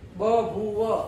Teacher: પછી ફલમ, ફ બોલો તોય બંને ઓઠ અડી જવાના છે. પછી બ ભૂવ, બ બોલો તોય બંને ઓઠ અડી જવાના છે